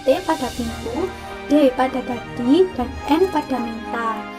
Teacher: bunyi yang dihasilkan oleh keterlibatan lidah dan Gigi atas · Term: bunyi apikodental